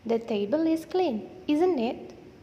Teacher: jika diucapkan dengan Rising intonation atau intonasi yang naik itu artinya kita tidak yakin atas apa yang kita sampaikan dan kita ingin menanyakan informasi atau kebenaran atas hal tersebut contohnya